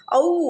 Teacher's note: அவ் அப்படின்னு நம்ம உச்சரிக்கும் போது அவ் அப்படின்னா உ அப்படின்னு நம்ம வந்து பினிஷ் பினிஷ் பண்றோம்ல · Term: இணை எழுத்து